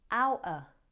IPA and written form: ˈaʊʔə (Out of)